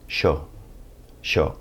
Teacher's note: if you're in the southern cone that Y sound is going to sound more like an sh sound